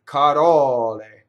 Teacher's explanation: There's an open O on the stress, and we have to be very careful and not double the L